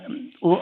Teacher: सबसे पहली बात तो ये कंठ हो जाएगा अ और उसके बाद ओष्ठ यानी उ। अ ऊ को मिला दोगे तो औ हो जाएगा ना?